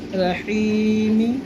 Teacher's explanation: حی کو ہم ایک الف کے برابر کھینچیں گے کیونکہ یا مدہ ہے، اور میم کے نیچے زیر پڑھیں گے، رحیمی۔